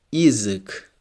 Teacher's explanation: Here the first letter Ya is unstressed, so it's pronounced like E.